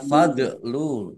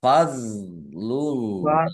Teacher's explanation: sukun bukan qolqalah jangan dipantulkan ya jangan di Jangan dibaca Fadlu ya tapi dibaca fadlullah Allahnya